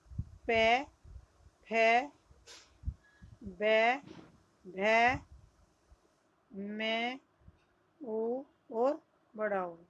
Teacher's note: ओष्ठ्य में आएंगे जो होठों के द्वारा बोले जाते वर्ण हैं